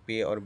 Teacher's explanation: उसमें दोनों होठों से हुआ हवा को रोका जाता है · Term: दो लबी